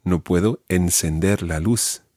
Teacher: the th sound has to be a s sound in Latin American Spanish